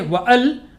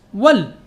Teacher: the hamza before l is temporary. So if something comes before it, the hamza is dropped.